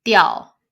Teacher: the IAO is yao. Let's give it a fourth tone